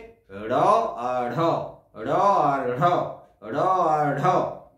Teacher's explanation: দেখো, এই উচ্চারণ করতে গিয়ে মনে হচ্ছে না জীব যেন তাড়িয়ে নিয়ে যাচ্ছে কাউকে, র আর ঢ, মূর্ধাকে তাড়িয়ে নিয়ে যাচ্ছে, মূর্ধায় গিয়ে জীব স্পর্শ করছে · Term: তাড়নজাত ধ্বনি